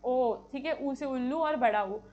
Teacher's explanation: होठ जो है ओष्ठ से हम बोलते हैं और वो भी हमारे गोल हो जाते हैं। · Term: ओष्ठय स्वर